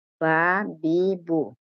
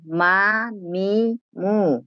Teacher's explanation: দুই ঠোঁট হইতে এই মাখরাজ বা, ওয়াও, মিম উচ্চারিত হয়।